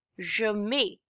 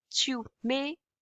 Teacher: Ending T-S, we do not pronounce it, and it's pronounced as may. Je mets. I put.